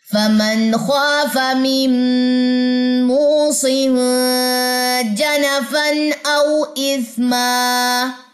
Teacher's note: وقف کی صورت میں ایک زبر ڈراپ ہو جاتی ہے اور ایک زبر الف کے ساتھ مل کے لمبی پڑی جاتی ہے